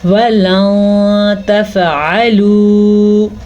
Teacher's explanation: جب بھی نون ساکن کے بعد یا نون تنوین کے بعد، نون ساکن کے بعد جیسا کہ یہ نون ساکن ہے، اور نون تنوین کے بعد یعنی کہ 2 زبر 2 زیر 2 پیش کے بعد ان میں سے اگر کوئی حرف آ جائے تو ہم نون ساکن یا تنوین کی آواز کو غنّے کے ساتھ ساتھ چھپا دیں گے